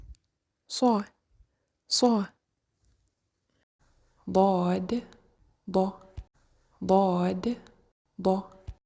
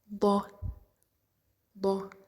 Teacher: it's pronounced from the edges of the tongue or the sides of the tongue with the roots of the upper molars. So what happened is that we stick the sides of the tongue with the upper molars.